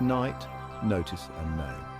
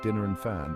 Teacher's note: Force what we've learned today the letter N is pronounced by placing the tip of your tongue against the ridge just behind your Upper Front Teeth and letting the air flow through your nose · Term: n Sound